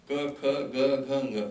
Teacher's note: Now there's the ka word, ka, kha, ga, gha, nga, which you must have read. Now all these sounds coming from the throat